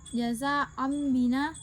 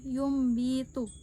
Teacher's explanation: Cara membaca iqlab yaitu dengan sederhana dan benar adalah dengan mengubah suara nun mati atau tanwin menjadi mim. Kedua bibir yang kita miliki dirapatkan untuk mengeluarkan suatu bunyi dengan dibarengi dengung yang mana hal itu keluar dari pangkal hidung. Kemudian haruslah ditahan sejenak yang kira-kira 2 ketukan sebagai suatu tanda bahwa di sana terdapat hukum iqlab.